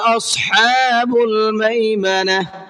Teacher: اصحاب الصاد کو پر کر کے پڑھیں گے اور حا کو حلق سے نکال کر کے پڑھیں گے